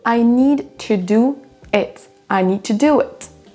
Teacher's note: On entend à peine le son de, en fait, il va vraiment être très léger, il va être atténué au maximum. · Là, on a need, un son D, et on repart avec un son T. Mais on ne va pas détacher ces deux mots-là, on va les lier entre eux.